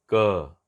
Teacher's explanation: जैसे कि मान लीजिए हम बोलते हैं बिना जीभ का स्पर्श, जो पश्च भाग है ऊपर बिना स्पर्श किए क नहीं हो रहा है, क, तो जीभ थोड़ी सी यहाँ पर मुड़ करके निश्चित यहाँ स्पर्श करती है, तब क का उच्चारण हम करते हैं।